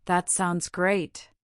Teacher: The intonation usually rises on great expressing genuine pleasure.